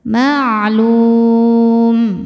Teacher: Maka lamnya panjang, boleh 2 atau 4 atau 6 harokat, asal konsisten dalam sekali baca. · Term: mad arid li sukun